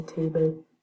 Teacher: at least in Newcastle they would say table with a light L.